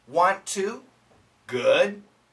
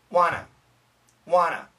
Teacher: But the natural way, wanna, wanna. And the N kills both T's. Wanna. So here we have the N killing one T, and here we have the N killing both T's.